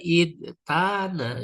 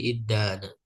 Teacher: Wal aslu dan asalnya idtana ya. Idtana huruf ta berubah jadi dal ya lalu diidghamkan jadi iddana.